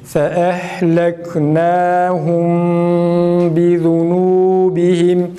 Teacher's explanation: mimi okuduğumuz andan itibaren gunne yapıyoruz. Fakat dudak geride olacak şekilde.